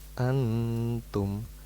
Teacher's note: itu nun sukun bertemu ta, maka hukumnya adalah ikhfa, samar-samar